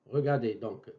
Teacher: mes lèvres sont arrondies, bou, bou